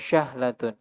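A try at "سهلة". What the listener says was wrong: Wah, bukan syahlatun. Pakai sin aja, Mas. Bukan shin. Iya, al-arabiyyatu lughatun sahlatun. Namanya aja sahlan. Berarti keluarnya harus mudah. Bukan syahlah. Ya, sahlah.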